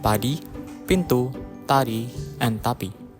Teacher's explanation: Indonesian only has voiceless unaspirated stops